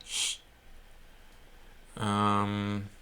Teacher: So SZ is like a sh, like a strong sh, and S with accent is more like sh. It's more like between your teeth.